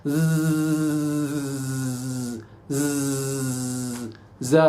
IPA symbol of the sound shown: z